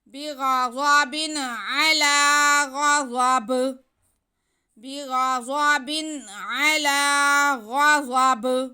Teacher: आगे फिर गईन पे ज़बर है, ज़ाद पे भी ज़बर है और बा के नीचे तनवीन है, लेकिन यहाँ पे वक्फ भी है तो हम यहाँ पे वक्फ ही करेंगे, तो बा को साकिन करेंगे। तो बा साकिन करेंगे तो हरफ कलकला साकिन होने की वजह से जुम्बश दे के पढ़ा जाएगा